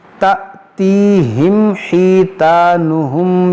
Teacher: یہ حمزہ ساکنہ ہے اور حمزہ ساکنہ کو جھٹکا دے کر پڑھا جاتا ہے